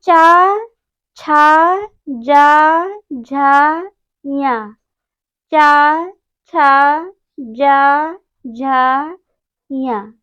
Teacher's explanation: चा वर्ग या और तालव्य सा, इन वर्णों का उच्चारण स्थान तालु होता है, क्योंकि जब इन वर्णों का उच्चारण करते हैं तो जिह्वा जो है तालु का स्पर्श करती है, इसलिए इन वर्णों का उच्चारण स्थान तालु होता है